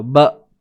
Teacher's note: huruf ba bertemu dengan hamzah yang mati, tahankan suara.